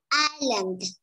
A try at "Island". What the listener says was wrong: Yeah, đúng rồi.